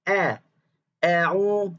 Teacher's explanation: dan tarqiqkanlah hamzah pada a'udzu. Dinipiskan a-nya, jangan o